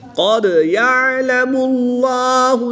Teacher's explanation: قاف حروف مستعلیہ میں سے ہے تو اس کو پر پڑھیں گے۔ دال حروف قلقلہ میں سے ہے اور جب حروف قلقلہ ساکن ہو تو ان میں قلقلہ خوب ظاہر کر کے پڑھیں گے